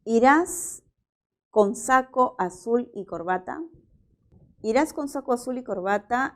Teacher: es una pregunta y es una pregunta que presenta tono final ascendente